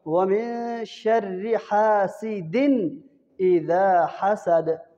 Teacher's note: جب نون ساکن نون تنوین کے بعد آگے حروف ہلکی میں سکارہ فاد ہے تو وہاں پہ اظہار ہوتا ہے، تو یہاں پہ حاسدن کے اندر دو زیر کے بعد آگے حروف ہلکی میں حمزہ آ رہا ہے تو یہاں پہ اظہار ہوگا۔